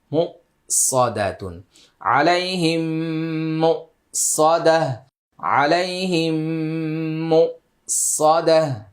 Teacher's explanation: মিম সাকিনের পরে মিম থাকলে গুণনা হয় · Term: ইদগাম শাফাউই